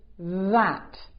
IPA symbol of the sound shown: ð